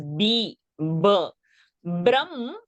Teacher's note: you should not say bh. You should say b. It is not bh. It is b.